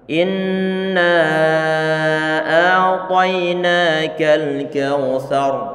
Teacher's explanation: Ini huruf ada huruf ra, ada huruf ra. Kita buat sukun karena kita mewakafkan huruf ra tersebut. Nah, maka nanti huruf ra perlu untuk dibaca tebal.